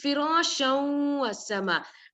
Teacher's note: idgham we are doing the merging